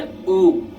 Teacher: जीभ के पीछे का भाग का प्रयोग होता है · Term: पश्च स्वर